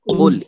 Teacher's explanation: دیکھیے قل میں جو ہے قاف، یہ قاف موٹا اور اونچا ہے۔ ق جسے ہم نے پڑھا ق موٹا اور اونچا، ٹھیک ہے، موٹا اور اونچا، ٹھیک ہے۔